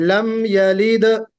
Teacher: दाल पर कलकले के साथ रुके